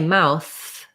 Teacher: So when I say mouth, I should really feel for this TH, my tongue between my teeth, and the air continues. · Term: voiceless TH sound